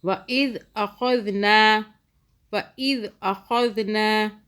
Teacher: ذال کو سافٹ پڑھا، خا کو موٹا پڑھا